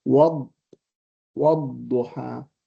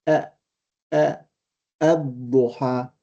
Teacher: And the dad has got a shadda in order to compensate for the missing lam in the pronunciation.